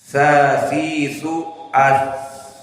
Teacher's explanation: Maka jika kita sukunkan sa, akan ada jaroyan nafs. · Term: ar-rakhawah